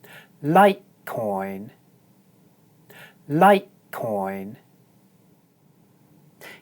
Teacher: In 'litecoin' the diphthong is followed by an unvoiced consonant sound, the sound /t/, and so it's pronounced short. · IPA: /ʌɪ/